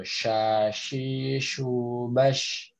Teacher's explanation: ada aliran udara yang menyebar karena dia memiliki sifat tafashi